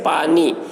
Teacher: ایک الف کی مقدار وہی ہے جو اردو زبان میں ہے، جیسے پانی کہ اس میں پا کو ایک الف کے برابر کھینچا جاتا ہے اور نی کو بھی ایک الف کے برابر کھینچ کر پڑھتے ہیں